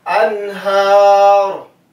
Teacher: anhar nun sukun, kemudian di depannya ada ha idhar, pengucapannya jelas